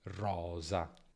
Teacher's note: Sono fricative dentali. La punta della lingua è molto vicina ai denti superiori. La differenza sta nella vibrazione.